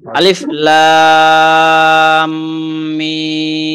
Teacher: লাম এবং মিমের মাঝে থামাটা যেন এত স্পষ্ট না হয়, গুণনা হবে কিন্তু আওয়াজটা থামবে না।